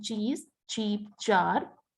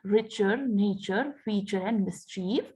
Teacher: a plosive immediately followed by a fricative in the same place of articulation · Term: affricates